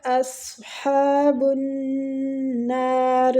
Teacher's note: کو تھوڑا سا کھینچیں گے کھڑی زبر کی وجہ سے، بنار نون مشدد ہے تو غنہ کریں گے اور کھینچیں گے بھی ، را زیر کی وجہ سے باریک پڑی جائے گی، ہم